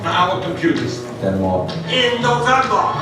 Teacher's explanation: You can also hear Bernie Sanders' New York roots in his R's, or actually in his lack of R's.